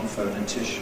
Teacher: a secondary stress on the /fəʊ-/, and that keeps it strong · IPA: /ˌfəʊnɪˈtɪʃn/